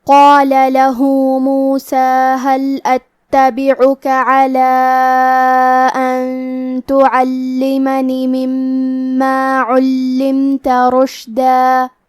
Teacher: قاف کی ادائیگی زبان کے جڑ اور تالو کے نرم حصے سے ہے. قاف حروف التفخیم میں سے ہے، لہذا ہمیں یہ حرف کو موٹی آواز میں پڑھنا ہے.